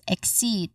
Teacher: All in all, we get exceed. The stress is on the second syllable. So, seed, we say it again as exceed.